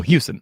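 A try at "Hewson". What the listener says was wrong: No T.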